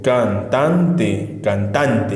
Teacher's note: cantante fíjate que la palabra cantante como pronuncio cantante cantante y dónde es la mayor fuerza de voz en tan · Entonces esa sílaba tan va a ser la sílaba tónica. Y can y te van a ser las sílabas átonas, ¿de acuerdo?